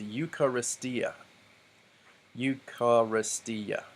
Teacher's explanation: then there's another iota and an alpha and we remember that that's not actually a diphthong that's just two vowels next to each other so this word is eucharistia eucharistia so there are five syllables